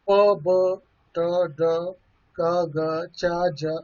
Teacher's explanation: It means that there is a velic closing, velic closure is there, soft palate is raised, it touches the back wall of the pharynx, it closes the nasal passage of the air.